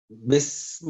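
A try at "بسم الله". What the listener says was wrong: اس کو سافٹ پڑھنا ہے، بالکل زور اس کے اوپر تو شاید ہے ہی نہیں ہے، اس طرح بس نہیں کرنا، بسم اللہ،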